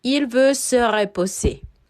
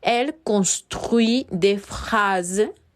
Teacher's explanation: Vamos a omitir el sonido de la T.